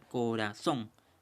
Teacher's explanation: la mayor fuerza de voz, la mayor pronunciación es en la sílaba son